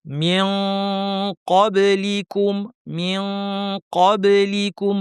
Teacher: নুন সাকিন বা কফ আসলে জিহ্বাটা কফের মাখরাজে লাগিয়ে দিবেন। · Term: ইখফা